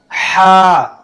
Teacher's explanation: ये बीच हलक से अदा होता है। हलक के दरमियान से इसमें ठंडा हवा महसूस होता है।